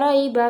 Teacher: pada kata raiba terdapat hukum bacaan mad lain yang dibaca panjangnya 2 harokat